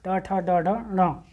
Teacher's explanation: मूर्धा से जिसका उच्चारण होता है, अर्थात जीभ जो है मुड़कर पिछले भाग को टच करती है, उसे बोलते हैं मूर्धन्य